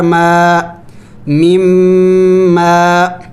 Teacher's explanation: میم مشدد ہے، میم مشدد پر غنہ کیا جاتا ہے